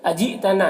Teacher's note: یہاں پر حمزہ ساکنہ ہے، جھٹکا لگے گا